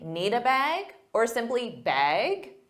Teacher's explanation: bag with a rising intonation to show it's a question